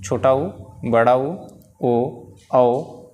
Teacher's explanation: तो जिन स्वरों के उच्चारण में मुंह जो है, जब हम उसे बोलते हैं, उसका उच्चारण करते हैं, तो ओंठ जो है वह वृत्त के आकार में वृत्ताकार हो जाते हैं, गोलाकार हो जाते हैं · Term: वृत्ताकार स्वर